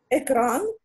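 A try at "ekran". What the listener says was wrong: Ні, наголос. Наголос.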